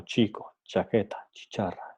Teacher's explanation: tenemos en un primer instante el cierre total del flujo del aire · El fonema ch es un palatal africado sordo. Entonces, es un fonema palatal porque el punto de articulación es la zona palatal, que está justo después de los dientes, de los incisivos superiores.